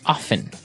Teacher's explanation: They kind of leave out the strong T sound.